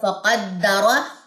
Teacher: دال کی جو تشدید ہے اس پہ ہم سٹے کریں گے. اس کو یہ نہیں پڑھنا فقدرہ، نہیں، فقدرہ تشدید پہ سٹے ہوتا ہے اس کی جزم کے اوپر.